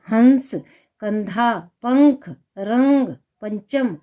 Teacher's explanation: इसका उच्चारण करते समय हवा नाक से बाहर निकलती है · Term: अनुस्वार